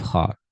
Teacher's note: Al kha is produced from the upper throat, back of the mouth. Some students say al kha, say ka instead of kha.